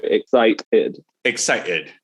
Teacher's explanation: it's technically a glottal stop so what's happening is that you stop the sound between the two syllables so rather than excited where it's smooth we go excited excited